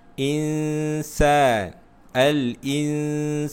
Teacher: hukum ikhfa, nun bertemu dengan sin, ikhfa hakiki, dan di mana kamu perlu membaca dengan dengung, memasukkan bukan memasukkan, ikhfa bermaksud sembunyikan.